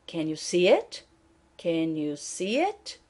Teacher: So there is a rise in the intonation at the end.